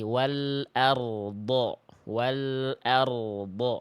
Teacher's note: Jadi ada getaran huruf ro dulu. Rnya getarannya jangan sampai samar ya.